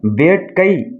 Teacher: கை என்பது கடைசியில் ஐ வந்துருக்கிறதுனால 1 மாத்திரை அளவில் ஒலிக்குது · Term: ஐகார குறுக்கம்